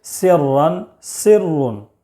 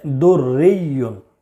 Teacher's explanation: را مشددہ پر زبر یا پیش ہو تو پر، جیسے سرن، سرن، اور زیر ہو تو باریک، جیسے دریون۔